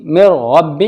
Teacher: अब देखिए नून साकिन के बाद रा आ रहा है तो इदगाम ताम होगा बगैर गुन्ना के।